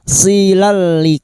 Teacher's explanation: idgam bila gunah masuk tanpa mendengung masuk ke huruf lam tanpa mendengung